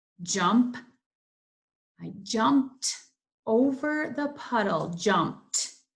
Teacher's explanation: It sounds like a T sound, but I know it's just ed.